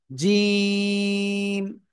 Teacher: জিহ্বার মধ্যখান তার বরাবর উপরে তালুর সাথে লাগিয়ে উচ্চারণ করতে হবে। জিম, তিন আলিফ টানে উচ্চারণ করতে হবে।